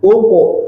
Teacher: Uqu, maka tebal, qalqalahnya tebal.